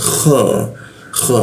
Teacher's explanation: kha itu di atas jakun ya, kha, kha ada ngoroknya dia